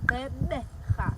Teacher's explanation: The second click is the B, which is a B, Gqeberha. You make this B sound by almost sucking in the air between your lips and smacking your lips together to make a B sound, Gqeberha.